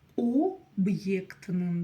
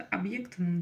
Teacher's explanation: По-русски мы говорим просто «объектным», через «а» практически слышится.